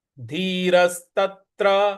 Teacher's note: त के बाद जो त्र है उस पर भी हमको थोड़ा सा आघात देना है।